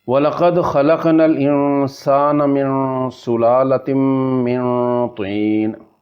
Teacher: نون ساکن تھی بعد سینا اتھیں اخفا ہوسی،